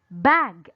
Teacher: the word bag listen carefully to the vowel sound bag yes the sound of letter a here is a short vowel sound it sounds like ah